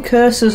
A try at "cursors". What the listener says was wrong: Curses? Oh, cursors. Yeah, you're saying curses, like a witch cursed you.